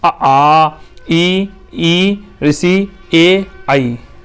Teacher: अब कह रहा आवृत्ताकार स्वर तो आ माने नहीं वृत्ताकार जिनका आकार गोल ना बने तो वे स्वर जिनके उच्चारण में होठों की आकृति वृत्त के समान गोल ना होकर फैली रहती है। आवृत्ताकार स्वर कहलाते है।